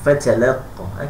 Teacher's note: Mesti ta tu di atas ta dihamaskan. Ta dihamaskan, maksudnya dihembuskan ataupun dipercikkan suara kita sedikit